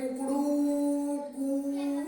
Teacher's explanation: 3 मात्राओं का समय लगा तो वो कहलाते हैं त्रिमात्रिक स्वर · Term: प्लुत स्वर